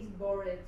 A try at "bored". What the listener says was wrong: Claro, you're pronouncing the ED like as if it was id. Sometimes we pronounce the ED, but only after a D or a T. So for example, waited, hated, faded. Otherwise, you just go straight from the end of the word to the D. So bored, played.